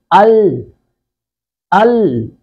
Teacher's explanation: حمزہ زبر لام، ال، سامنے والے دونوں دانتوں کے جو بیک سائڈ ہے، مسوڑے جو ہیں ان کے ساتھ زبان کا کنارہ لگ رہا ہے۔